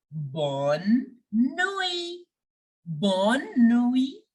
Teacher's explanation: The T in the end is silent.